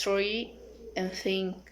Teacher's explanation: characteristic dental fricative and voiceless